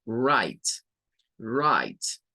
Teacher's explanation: Bueno, write es de estas palabras que comienzan con WR, donde la W pierde un poco el sonido, ¿verdad? No se escucha mucho. Se escucha a partir de la R y luego esta I se hace larga como I y esta es como muda. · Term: Magic I